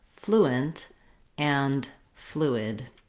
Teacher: Both words have the stress on the first syllable, and they start with the flu sound. · we do hold the flu longer, and then the nt and id syllables are shorter and more reduced with reduced vowels. It is the same, this flu, as the word flu, as in, for example, the bird flew.